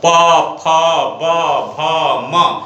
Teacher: ये ओष्ठ को स्पर्श करते हुए निकलते हैं